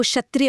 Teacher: आधा क और श से मिलकर बनता है। इसे बोलने के लिए गले से क की आवाज निकालनी पड़ती है और उसी सेकंड जीभ को तालू पर ले जाकर घर्षण करना होता है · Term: संयुक्त व्यंजन